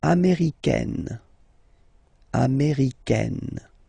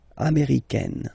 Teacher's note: Okay, it's really open, this AI, américaine